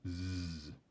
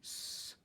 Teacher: So the z uses the voice box, the s doesn't use the voice box.